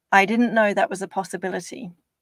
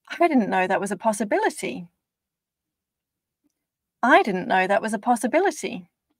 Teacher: You could hear that first one was lower pitch for anxiety, and the second one that I've just done was higher pitch for excitement or optimism.